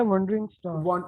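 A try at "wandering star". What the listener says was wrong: वॉन्डरिंग स्टार, वॉन्डरिंग था ना बेटा, वो ए के साथ था ना। हाँ, वंडरिंग ऐसा हो सकता है अगर कोई सोचने वाला, वंडरिंग वो फिर ओ के साथ हो सकता है, लेकिन ये जो आपने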